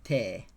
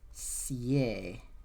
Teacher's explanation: te is going to become sie, because the T becomes an S. Sie, and then would you not do it?